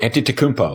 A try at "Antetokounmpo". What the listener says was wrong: Well, see, you're putting a little 2 in there. I think it's just Antetokounmpo. Like you I think you're saying it right, but that's the thing.